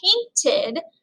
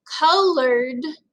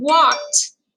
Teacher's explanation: if we have painted, it's going to end in that id sound. Colored ends in a d sound, and walked ends in a t sound.